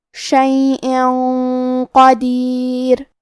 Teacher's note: کلمت قدیر میں قاف کی ادائیگی زبان کے جڑ اور تالو کے نرم حصے سے ہے اور ہم حرف القاف کو موٹی آواز میں پڑھیں گے